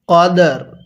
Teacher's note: এরপরে কফ দাল জবর কদ র জারি কদরি ওয়াকফু করলে কদর র টা হালকা উচ্চারণ হবে দালটা পরিপূর্ণ উচ্চারণ হবে